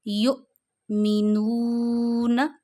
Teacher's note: یؤمنون۔ اچھا، یہاں پہ حمزہ پہ ہے جزم، حمزہ ہے ساکن، جب حمزہ پہ جزم آتی ہے تو آپ اسے جھٹکا دیتے ہیں